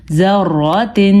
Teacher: را پر پڑھیں گے کیونکہ را کے اوپر زبر آ گئی ہے